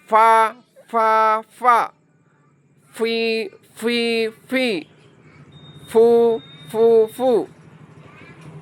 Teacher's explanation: Fa, perhatikan, fa, huruf fa itu bibir bawah bertemu gigi seri atas.